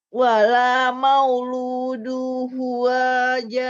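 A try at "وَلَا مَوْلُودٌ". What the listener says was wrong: Mauludun. Pakai tanwin. Mauludun.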